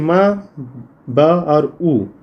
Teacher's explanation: म, ब और उ ये जो है ओष्ठ है, होंठ से इनका उच्चारण होता है